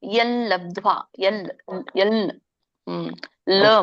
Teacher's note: ಪಾಣಿನಿ ಶಾಸ್ತ್ರದ ಪ್ರಕಾರ ಎಲ್ ಲಬ್ಧ್ವಾ ಲ ಮೂಗಿಂದ ಬರುತ್ತೆ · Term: ಮೂಗಿಂದ ಲ